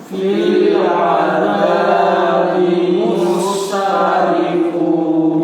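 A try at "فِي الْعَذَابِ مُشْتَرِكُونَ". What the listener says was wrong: Mush ya, bukan mus. Mush. 3 gelombangnya. 3 gelombangnya sya, huruf sya. Huruf shin. Kalau satu aja baru sa.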